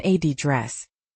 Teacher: >> And in British English, >> often adress stressed on the first syllable.